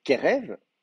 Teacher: donc l'accent est sur la première syllabe